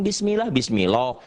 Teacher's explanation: mengucapkannya tipis sehingga suara yang keluar bukan lagi o tapi a · apabila lafaz Allah didahului oleh huruf yang berharakat di bawah kasrah mengucapkannya tipis sehingga tidak sampai memenuhi mulut ketika mengucapkannya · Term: tarqik